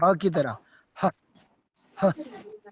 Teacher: विसर्गों का उच्चारण ऐसा होता है जैसे हम सांस एकदम से छोड़ते हैं